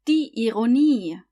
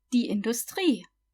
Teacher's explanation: The IE is pronounced like a long E